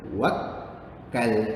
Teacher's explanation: Seakan-akan ada dua huruf kaf. Satu mati, satu hidup. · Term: sabdu